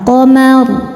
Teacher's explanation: ada huruf berharokat fathah, maka ro-nya tebal